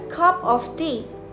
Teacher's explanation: In situations like this, the initial unstressed syllable will often realign itself so that it attaches to the food that came before it. The weak syllable will be more strongly connected with the stronger syllable that came before it in the phrase cup of tea. This is illustrated by the popular abbreviation CUPA for cup of, which stands for the phrase.